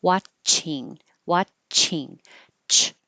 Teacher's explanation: The big difference here, the ch sound, your tongue presses up against the top of your mouth and builds up pressure of air behind it, and then you release it with the air pressure bursting out